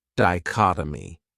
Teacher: This word has 4 syllables, and the stress is on that second syllable, dichotomy.